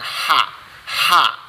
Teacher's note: ha itu di tengah-tengah tenggorokan